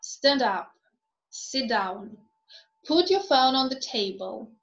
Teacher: imperatives again falling intonation